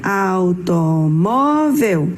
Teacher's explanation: Sua sílaba mais forte é o mó e ela está então na penúltima posição.